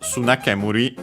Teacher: What's interesting is that actually the accent of sunakemuri is on the ke. And so notice again on the first syllable, first mora, technically, but yeah, doesn't matter in this case, of the second part of the compound.